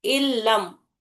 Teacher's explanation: सिर्फ लाम को हम शिद्दत सख्ती से दो मरतबा अदा कर रहे। ये अलामत जो है तशदीद, वो इदगाम की अलामत है। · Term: इदगाम बिला गुन्ना